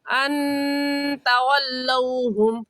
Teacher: اور تولوہم، یہاں پر واو ساکن سے پہلے زبر آ گیا تو واو لین ہوگا، اور لین کو ہم کھینچ کر نہیں پڑھتے۔ لین کا معنی نرمی سے ادا کرنے کے ہے، تو نرمی سے اور جلدی سے پڑھ جائیں گے، کھینچ کر نہیں پڑھیں گے